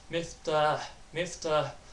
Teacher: there's really light H sound at the end of it